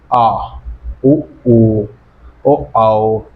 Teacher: ये पिछले वाले जीभ के पिछले वाले हिस्से से बोले जाते हैं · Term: पश्च